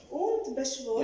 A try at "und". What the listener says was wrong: Yes, and the und is a little bit open.